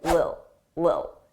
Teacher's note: sometimes native speakers will completely drop those T's and they won't pronounce it at all, and it will sound like lil, lil